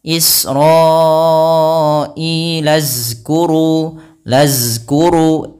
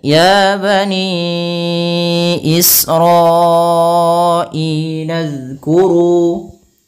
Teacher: huruf zal ujung lidah kita harus kita tempelkan dengan gigi sari atas agar kita menyempurnakan daripada makhraj huruf zal.